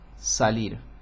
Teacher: Es una S laminal, esa con la mitad de la lengua. En la parte media de la lengua sobre el paladar, o más bien casi el paladar, un poco más atrás.